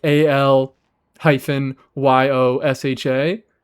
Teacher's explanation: going from the l sound to the y sound, there's a little bit of a a gap in there that makes it sound like aliosa